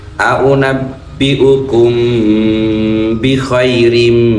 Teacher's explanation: ini tanwin kasrah tanwin bertemu mim ini idgham bigunnah masuk mendengung tiga ketukan